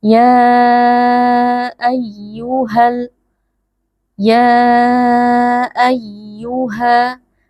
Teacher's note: huruf ya tasydid kita beri sedikit penekanan tapi tidak boleh berlebihan apalagi sampai memutuskan suara.